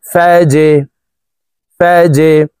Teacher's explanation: জিম কলকলার হরফ নিচের দিকে ধাবিত করে ধাক্কা দিয়ে অর্থাৎ কলকলা করে উচ্চারণ করব